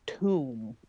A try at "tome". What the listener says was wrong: Not a tomb, a tome. You have to make sure the correct vowel.